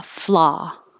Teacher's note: there's no w sound there's no rounding of the lips it's just ah